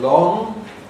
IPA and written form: lɒŋ (long)